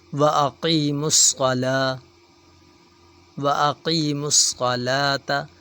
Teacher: صاد بھی موٹا حروف ہے، موٹا پڑھیں گے، اگر باریک پڑھیں گے تو سین کی آواز نکلے گی۔ واقیموا الصلاة، واقیموا الصلاة، لام کے اوپر کھڑی زبر ایک الف کے برابر کھینچیں گے۔